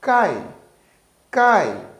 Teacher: fraco que o fonema a quando nós dizemos cai cai então o a ele é mais forte ele domina essa sílaba e já o i ele é mais fraco · Como nós temos esses dois fonemas, o fonema A e o fonema I, o I neste caso, ele soa mais fraco que o fonema A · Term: semivogal